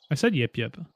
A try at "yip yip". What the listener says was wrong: You said yup yup.